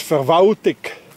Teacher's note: In Bern, that's being pronounced as Verwaltig. Anybody hears an L? No, it disappeared.